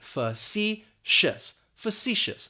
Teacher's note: That first syllable is going to have that schwa, that fa, and we're just basically going to pronounce the letter C, facetious, facetious.